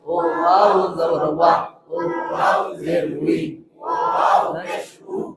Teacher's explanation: দুই ঠোঁটের মাঝখানের ফাঁক থেকে আদায় হবে